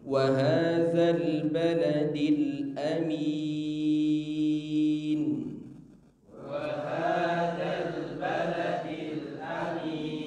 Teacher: Hamzah dari aqsal halqi, min juga tidak boleh keluar lewat hidung.